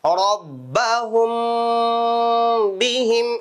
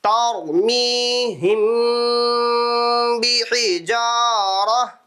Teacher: இந்த மீமே சாக்கினுக்கு அப்புறம் பா வந்திருக்குது இப்ப நம்ம அதனால கொஞ்சம் வச்சு குன்னா பண்ணி ஓதணும் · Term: இபாவி ஷஃபவி